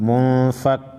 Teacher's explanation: فک منفک کاف یا زیر کی منفکی نون زبر نا منفکینا نون ساکن ہے اس کے بعد حروف خلقی میں سے کوئی حرف نہیں ہے، نون ساکن پر اخفا کریں گے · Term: اخفاء حقیقی